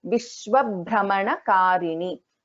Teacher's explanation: Bha is a Mahaprana in this case.